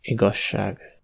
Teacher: le tout s'assimile en un [ʃː] long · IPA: ['igɒʃ:a:g]